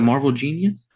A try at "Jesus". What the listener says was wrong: Jesus. You said genius, but it is Jesus, yeah.